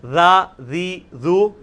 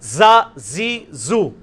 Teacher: ذا ذی ذو, سیٹی نہیں اس میں نرمی. ذا ذی ذو, زا زی زو, اس میں وہ سیٹی زیڈ والی آواز. اور یہ وہی مخرج ہے لیکن تھوڑا موٹا.